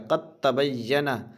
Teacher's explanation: दाल में जज़म है, ता में तशदीद है तो क़त बोलना है, काफ डायरेक्ट ता को पकड़ेगा। क़द तबय्यना, दाल यहाँ पे हज़फ हो जाएगा, दाल साइलेंट हो जाएगा।